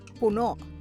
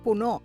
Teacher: listen out for the last syllable being cut short.